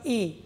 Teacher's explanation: এ আর ও যখন বললাম তখন মুখবিবর খানিকটা খুললো কিন্তু সম্পূর্ণ খুললো না, তার মানে এখনও বদ্ধ অবস্থায় আছে কিন্তু বদ্ধটা খুব বেশি নয়, তাই অর্ধ সংবৃত।